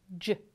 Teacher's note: Same thing for the word 'jam', you start off the sound with a stop [d] and then release this stop but still keep the articulators close together to make a fricative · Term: affricates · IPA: [dʒ]